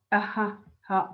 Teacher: ha is often classified as a glottal fricative